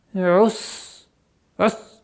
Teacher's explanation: свистящий звук с сукуном? То есть, струя воздуха продолжает идти